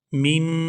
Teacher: یہاں اخفا کریں گے، آواز ناک کے اندر جائے گی اور اس کو 2 سے 3 سیکنڈ ناک کے اندر روک کر رکھیں گے۔